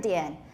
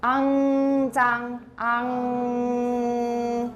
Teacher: tip of your tongue touches your alveolar ridge to make n. The back of your tongue touches your soft palate or velum to make ng. And in Chinese, it's ang, zang, the ang.